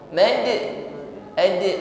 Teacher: huruf dal yang diwaqaf maka tampak qalqalahnya. Mad, ad, ya, tampakkan bunyi pantulannya, jangan disembunyikan.